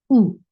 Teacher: For Dhamma, circle your lips. The sound is short.